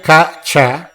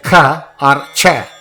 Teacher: they are hard consonant but they are non aspirate are Alpa PR because they don't throw more air right now